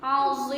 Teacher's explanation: ujungnya panjang, disebut mad arid disukun